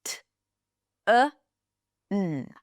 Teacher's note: The vowel between the T and the N is a reduced vowel. It's a schwa. It is barely there.